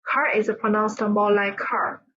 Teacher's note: the use of non-rhotic accent, where the R sound is not pronounced at the end of the words or before consonants